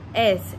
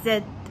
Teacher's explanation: Les constructives alvéolaires S et Z. S. Les cordes vocales écartées ne vibrent pas. Z. Et les cordes vocales vibrent. Alvéolaires.